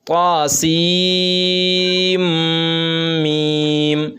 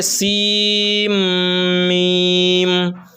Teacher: सीन को मीम में मिलाना है, सीन मीम नहीं कहना है बल्कि सीम मीम।